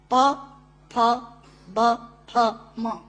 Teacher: दोनों होंठ मिलाकर बोले जा सकते हैं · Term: ओष्ठांग